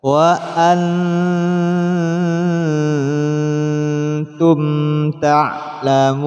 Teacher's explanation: Mim mati bertemu tak, hukumnya izhar, dibaca jelas. · Cara mudah mempraktikkan ikhfa adalah memasukkan nun mati pada tak. Jadi ketika nun mati dilafadzkan, sudah siap melafadzkan tak.